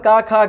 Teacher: पूरा कवर्ग कंठ से बोला जाएगा